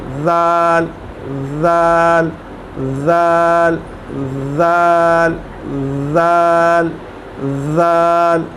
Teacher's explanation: जो हमारी ज़ुबान की टिप है और जो सामने वाले दांत हैं उनकी जो नीचे वाली टिप है वो वहाँ लगेगी, दोनों एक दूसरे के साथ लगेंगे तो ये ज़ाल अदा होगा। ज़ाल, बड़ी बारीकी से और बड़ी नरमी से।